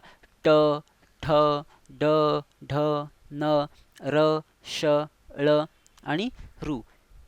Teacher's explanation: तालू व कंठ यांच्यामधील जो भाग आहे तो म्हणजे मूर्धन्य